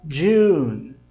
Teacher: no som de June tem um som como se tivesse um D na frente da letra J